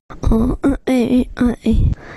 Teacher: for every single one of their plosives they are using a glottal stop substitution